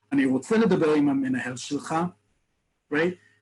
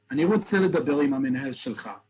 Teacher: The words get elided, they get mushed together because I'm heated up in the moment, but I also make it very definitive at the end. No uptalk, no question tone at the end, it's firm.